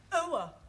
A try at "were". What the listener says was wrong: Almost. Try again, but this time, don't say oa, just were.